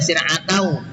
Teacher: Kemudian yang ketujuh ini syir'atau, tulisannya syir'atan dibaca syir'atau, idgham bi gunnah, ini tanwin fathahnya ya, tanwin fathah dimasukkan dengan dengung